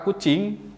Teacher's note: yang pertama bulat dan yang kedua adalah tidak bulat sebagai contoh bunyi vokal u dalam kata kucing memiliki bibir yang bulat